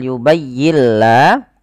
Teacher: Idgham artinya memasukkan bunyi suara nun ke huruf setelahnya, ke huruf lam, mengganti menjadi huruf lam. Kemudian dia tidak boleh ditahan, maka dinamakan dengan bila gunnah atau idgham idgham bila guna. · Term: idgham bila gunnah